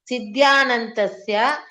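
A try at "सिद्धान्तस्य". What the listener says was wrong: Ananta is not there, Bhagini. Siddhantasya.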